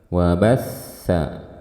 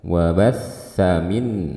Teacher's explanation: Kemudian wabassa, ada sa bertasydid karena dia bersifat rokhawah, alirkan suaranya. Wabassa, jangan buru-buru.